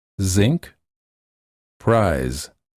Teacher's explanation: the sides of the tongue touch the middle and the back upper teeth the tip of the tongue is lowered a bit and air flows out through the middle part of the tongue